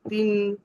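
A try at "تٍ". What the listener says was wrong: এ- আ- মানে এইভাবে টান না দিলেও চলবে।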